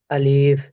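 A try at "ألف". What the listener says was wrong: আলিফকে টানা যাবে না আলিফকে টানা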